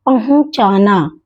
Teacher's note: ह के ऊपर उ की अनुनासिक लग रहा है।